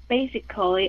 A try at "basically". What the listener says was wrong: Cái chữ basically ha, đừng có cò lì ha. Tuy rằng nó viết là basically, yeah, just basically.